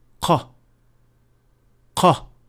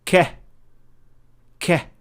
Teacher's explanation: First, we see that the movement of the back of the tongue is very similar, if not identical. The difference with qaf is that it is a little bit deeper into the mouth, as it is only touching the soft palate, and the sound is produced at that point.